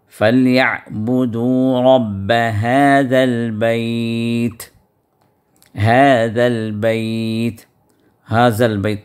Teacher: رب هذا یہاں پر ذال ہے، اور آپ کو معلوم ہے کہ ذال جو ہے اس کی ادائیگی زبان کی نوک کو دونوں دانتوں کے درمیان میں باہر نکال کر ادا کرنا ہے